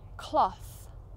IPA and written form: klɒθ (cloth)